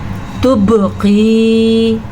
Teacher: बा पे कलकला करना है और या मद्दा अदा करनी है। काफ को खींच के पढ़ना है या की वजह से, और काफ को मोटा भी पढ़ना है क्योंकि काफ हुरूफ़ मुस्तालिया में से है।